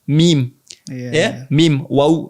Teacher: Mim, waw itu makhrajnya sama